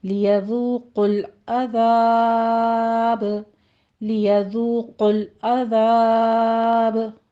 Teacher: ज़ाल को नरमी से पढ़ेंगे, वाव मद्दा अदा करनी है, दोनों होंठों को गोल कर लीजिए, 2 काउंट करना है। · मद आरिज वक्फी हो रही है, 6 काउंट करेंगे और बा पर कलकला हो जाएगा।